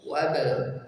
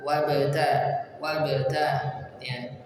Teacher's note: Maka apabila dalam kondisi di tengah tidak terbaca, dari waw langsung ke huruf ba. Wabal, pantulkan ba sukun. Qalqala sughra karena berada di tengah, langsung pindah ke huruf ta.